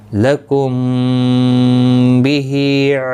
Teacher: لکم، دیکھیں یہاں پر بھی میم ساکن کے بعد با آیا اور یہاں پر بھی میم ساکن کے بعد آیا، اخفاء شفوی ہوگا، غنہ کے ساتھ پڑھیں گے